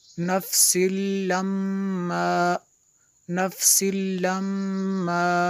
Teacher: मीम शद्दद गुन्ना होगा